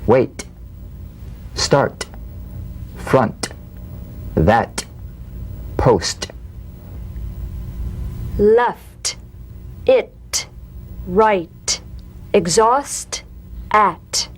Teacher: the unvoiced T tongue front palatal stop consonant cognate to the D the same staccato springing action as the D drumbeat with no · unvoiced T tongue front palatal stop consonant cognate to the D the same staccato springing action as the D drumbeat with no voice forms the light tap of the te